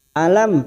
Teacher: mim sukun bertemu nun, namanya bacaan idhar syafawi, dibaca jelas tanpa mendengung